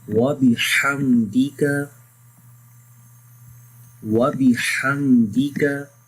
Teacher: this ha sound should be clear from the middle of the throat